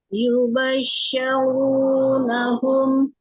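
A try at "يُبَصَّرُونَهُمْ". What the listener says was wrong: jangan sya ya, sod ya. Yubassarunahum itu sod bukan shin ya.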